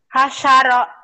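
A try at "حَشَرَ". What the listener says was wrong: Hasyaro, tapi jangan ada tasydidnya, jangan hasyaro, datar. Hasyaro. Hasyaro.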